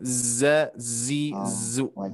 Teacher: Ya. Bukan tebal, Bu, desisannya lebih kuat ya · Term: sifat sofirnya